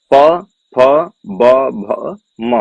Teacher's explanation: पा वर्ग का उच्चारण स्थान क्या है, ओष्ठ है।